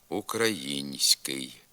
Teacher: за допомогою м'якого знака показується пом'якшена вимова тільки звука с а м'якшення звука н не позначається Хоч він вимовляється також пом'якшено